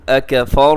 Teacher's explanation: را موٹا رکھیے گا، کیونکہ را ساکن سے پہلے زبر ہے، تو را کے اوپر حرکت ہو تو را موٹی ہوتی ہے، نیچے ہو تو باریک ہوتی ہے۔